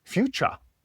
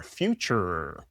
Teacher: bringing that R more forward, that harder North American R